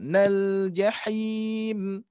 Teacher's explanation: Di sini mad aridnya hati-hati lam sukun ya, tidak nal jahim, nal tidak memantul tapi dialirkan